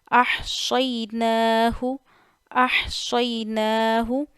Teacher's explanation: نون پہ کھڑا زبر ہے ایک الف جتنا کھینچنا ہے